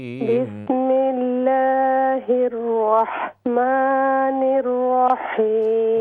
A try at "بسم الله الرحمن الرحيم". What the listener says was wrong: را کی تفخیم جو آپ را کو موٹا کر رہے ہیں اس میں واو کی آواز نہ ہو. بسم اللہ الرحمن الرحیم.